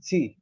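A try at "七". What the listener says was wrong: না এটা হচ্ছে সি এটাতে ফোর টোন নেই সি ফার্স্ট হুম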